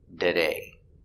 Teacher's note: a t between an r and a vowel you can pronounce like a t today or like a d today